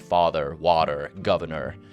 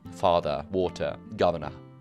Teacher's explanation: the R at the end of words is still pronounced, like father, water, governor, whereas in modern received pronunciation, or King's English, it would be father, water, governor. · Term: rhoticity